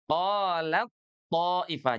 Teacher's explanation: Jadi huruf ta itu lebur sepenuhnya kepada huruf th ya. Huruf ta itu sepenuhnya lebur kepada huruf tho. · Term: idgham kamil